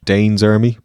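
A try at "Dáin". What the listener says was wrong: Could you say Dine's army? The film gets it wrong. They mispronounce Tolkien. Because D-A-F-O-D-I-N in Tolkien is with an I. So it's Dine.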